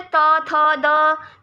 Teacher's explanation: त थ द, तो इनको बोलते हुए आपकी जीभ जो है वो दांतों को टच करेगी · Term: दंत्य ध्वनियाँ